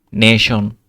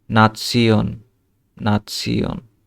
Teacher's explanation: জার্মানে শিয়ন সবসময় শিয়ন উচ্চারিত হয়, ইংরেজির মতো শন নয়